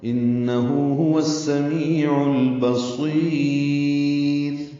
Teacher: هو السمیع میں واو کو جو سین سے ملا رہے ہیں ادغام شمسی ہو رہا ہے، عین کو جو لام سے ملا رہے ہیں اظہار قمری ہو رہا ہے. بصیر صاد پر پڑھیں گے اور لمبا کریں گے، را باریک ہوگی وقفاً.